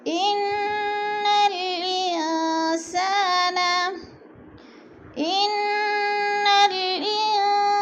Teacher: سین کو سیٹی کی آواز میں